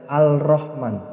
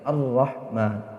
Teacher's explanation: Ar-Rahmannya ini alif lamnya alif lam syamsiyah atau idgham syamsiyah, tidak boleh dibaca Al-Rahman, tapi dibaca Ar-Rahman.